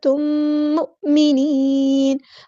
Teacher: میم ساکن کے بعد میم آیا تو یہاں پہ ادغام شفوی اور ایک الف کے برابر لمبا کریں گے